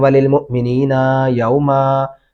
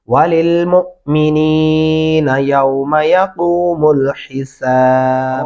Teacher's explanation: وللمؤمنین یوما، نینا نون لمبا نہیں کریں گے، یوما میم لمبا نہیں کریں گے